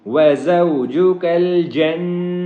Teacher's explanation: نون کے اوپر تشدید ہے جس کی وجہ سے اس کے اوپر ہم غنہ کریں گے